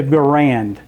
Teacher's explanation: John Garand was fine with us Americans accentuating the second syllable.